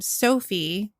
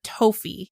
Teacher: he would replace the s sound with a t sound